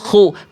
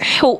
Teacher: Kalau ko kan khu ada kresek-kerreseknya sedikit.